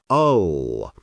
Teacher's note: Dark L. The tongue tip still touches the alveolar ridge, but the back of the tongue rises toward the velum, the soft palate. It creates a deeper, heavier sound, ull. Not a quick ull, but a continuous ull, with the sound flowing steadily.